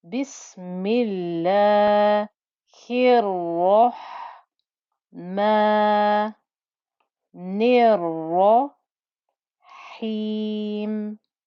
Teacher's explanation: The Ra, because it has a shadda, I must give time. And you can hear the noise through the 2 Ra's that are in that shadda.